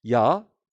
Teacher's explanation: 두 가지 상향 이중모음이라는 것이 있다. 이것은 반모음 플러스 단모음에서 소위 반모음이 앞서는 것을 말합니다